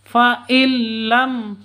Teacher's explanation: non mati bertemu dengan lam cara bacanya langsung masuk ke lam tanpa dengung faillam seperti itu ya karena bacaan Idgham bilun bila ghunah sama